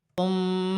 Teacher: میم مشدد ہے، میم مشدد میں غنہ ہوگا